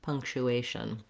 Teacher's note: if there is a vowel there it's a little bit of a schwa it's a reduced sound what you're trying to do is move very quickly from the sh to the n